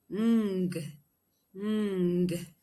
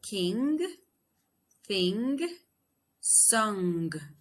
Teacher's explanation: It is voiced, it is nasal velar, and it is plosive.